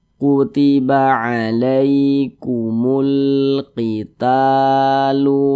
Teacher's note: Nah, jadi secara singkatnya rumus mad tabi'i yang di kotak nomor 3 itu huruf alif pasangannya adalah tanda baca fathah sehingga huruf sebelumnya itu dibaca panjang begitu. Ta dibaca panjang, mad tabi'i panjangnya 2 harokat